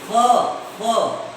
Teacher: The upper teeth touch the lower lip when we say fa. So that's why it is a consonant sound.